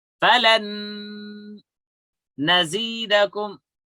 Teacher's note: skip the noon or tanween and pronounce gunna with the following letter for 2 beats.